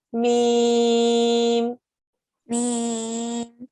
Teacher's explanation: When you get to the meme, you close your lips and you stop the air. You stop the sound.